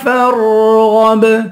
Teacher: فا کو را سے ملا کر را کو پر پڑھیں گے، غین کو با سے ملا کر غین کو پر پڑھیں گے، با پہ قلقلہ کریں گے